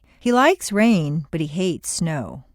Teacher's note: Like and hate are contrasted and are the stronger words in the sentence.